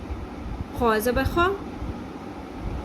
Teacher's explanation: یہاں پہ خا میں خراش کی آواز آنی چاہیے